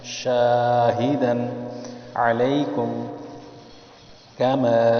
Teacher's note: میم پہ چھوٹا مد ہے، اس کو دو الف کی مقدار کھینچا ہے